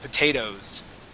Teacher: but we would go straight from an o sound to a z sound